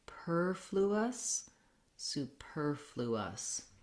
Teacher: It's also challenging, as you heard me just make the error, to make sure that we have that L sound in there, fluous. We have our tense oo sound again and our relaxed schwa in the last syllable. So I would recommend starting this on your stress syllable because the R may be the most challenging.